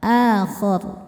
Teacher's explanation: ro disukunkan dibaca secara tafhim karena sebelum ro sukunnya ada baris fathah maka rnya tebal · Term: tafkhim